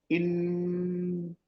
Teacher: आप ध्यान दीजिएगा कि ओठ जरा सा खुला हुआ रहता है और जीभ तालू से सटी हुई जाती है। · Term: भ्रामरी